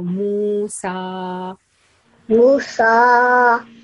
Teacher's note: Simple, we are reading seen sound and seen has fatha. We produce seen sound up to 2 seconds with open mouth.